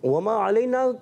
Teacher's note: وما کو بھی نہیں کھینچنا، ایک الف، ٹھیک ہے، مد نہیں کرنی.